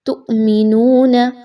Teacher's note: حمزہ ساکن، حمزہ کے اوپر جزم کی علامت اور وہ ساکن ہو رہا ہے تو ہم اس وجہ سے اس کو جھٹکا دے کر پڑھیں گے۔